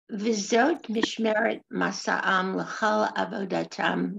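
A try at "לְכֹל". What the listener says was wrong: Lechol, lechol. You don't say lechal, lechol.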